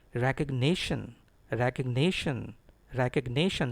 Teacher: I have written the words which have stress in capital letters. So the stress is on NI.